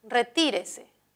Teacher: en retírese el acento está en la antepenúltima por lo tanto será es esdrújula